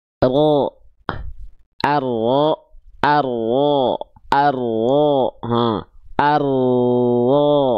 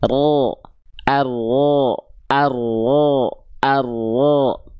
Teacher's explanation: karena ujung lidahnya enggak nempel, dia akan membuat sedikit celah gitu · Karena memang yang nempel adalah bukan ujung lidahnya. yang nempel adalah bagian punggung lidahnya.